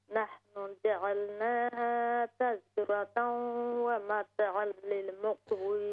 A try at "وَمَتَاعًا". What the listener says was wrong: ہاں نہیں, وَمَتَاعًا تا کو ہم نے لمبا کرنا ہے.